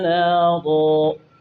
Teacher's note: تنوین کا جو نون ہے وہ الف سے بدل جائے گا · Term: وقف بالابدال